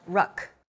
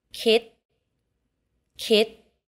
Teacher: all final consonants in thai are unreleased